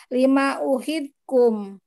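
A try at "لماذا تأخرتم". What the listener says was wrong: Bukan kum, tum, tum, tum.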